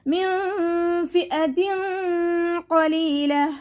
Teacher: നൂൻ സാക്കിനയ്ക്ക് ശേഷം ഇഖ്ഫാഇൻ്റെ ലെറ്ററായിട്ടുള്ള ഫ വന്നു. നൂൻ സാക്കിനയെ മറച്ചു വെച്ചിട്ട് മണിച്ചോതി കൊടുക്കുക.